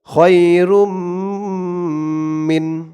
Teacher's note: বাগুন্নার চার হরফের এক হরফ মিম আসছে তাসদিদ সহকারে তাই এখানে এই তানবিন টাকে গুন্নার সহিত মিলাইয়া পড়তে হবে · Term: ঈদগামে বাগুন্না